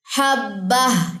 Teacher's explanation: اور حبہ دونوں نقطے جو ہے یہاں پہ ڈراپ ہوں گے، تنوین دو زیر کی، ٹھیک ہے، یہ ڈراپ ہو جائے گی. حبہ اس طریقے سے وقف ہوگا.